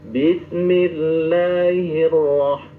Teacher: Ro itu di pinggir ujung lidah harus ada getaran